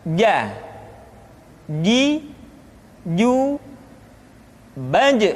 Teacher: dikeluarkan dengan menyentuhkan tengah-tengah lidah dengan langit-langit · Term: huruf j, huruf ja